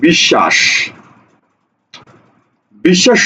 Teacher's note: ছিল দেখোতো এই যে তালব্য স কি কি দুইবার উচ্চারণ হয়নি দেখো তালব্য স দুইবার উচ্চারণ হইছে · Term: দৃত্ত